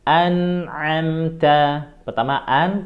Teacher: Kemudian an'amta, an, ya, itu dijelaskan nun sukunya disempurnakan tapi tidak boleh didengungkan. An'amta, pertama an, tenggorokan bawah, a, tenggorokan bawah, ya.